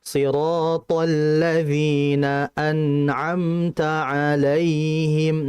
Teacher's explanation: nun dan mimnya ini masuk kategori yang gunnah naqisah. Gunnahnya tidak sempurna.